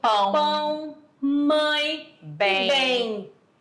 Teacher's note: quando eu falo bem, esse M tem um som de I. Bem, você não fala bem, nem tem como pronunciar bem, bem, automaticamente, lá no fundinho ele vem o bem.